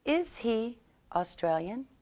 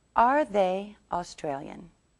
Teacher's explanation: first we begin with the verb and then the subject and we put more stress on the verb